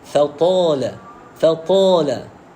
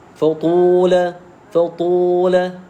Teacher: Maknanya kita mencampurkan bunyi alif mad ini dengan bunyi ataupun suara bunyi waw.